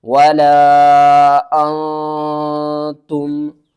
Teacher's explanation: ہے۔ ولا حمزہ نون زبر آن، تا میم پیش تم، تم، نون کے اوپر ہم نے اخفا کرنا ہے، یعنی کہ نون کی آواز کو چھپا کر پڑھنا ہے۔